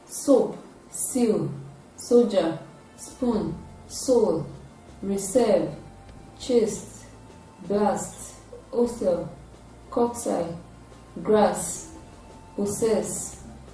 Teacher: It is produced with partial blockage of air coming from the vocal cord, and the air is slowly released It is a voiceless sound, and it is produced when the tip of the tongue is touching the alveolar ridge. It is a voiceless alveolar fricative sound.